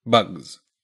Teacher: So we say bugs, turning that S into a Z.